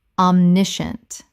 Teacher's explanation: Three syllables in natural speech. The scient collapses to shunt.